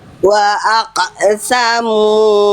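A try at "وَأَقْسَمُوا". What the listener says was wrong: Pantulan kofnya gimana? Jangan kayak keselak Bunda. Enggak kof enggak sedalam itu. Biasa aja. Wa aqsamu.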